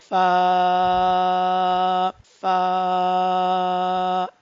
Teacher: This letter is very easiest letter to pronounce by touching edges of upper front teeth with your lower lip. जब भी हम ऊपर के दांतों को नीचे के होंठ के साथ टच करते हैं तो हमारे पास फा अदा होता है।